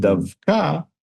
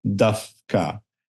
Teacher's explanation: anticipating that they're going to need to make an unvoiced K in a second, or in a fraction of a second, they also unvoice the sound before. And instead of saying Davka, they say Dafka.